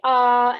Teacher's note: in english when we say the vowel ah most of the air is coming out of the mouth so if you say ah and then plug your nose it · of that sound energy is coming out of the mouth and the soft palate is actually raised up and it closes off the nasal cavity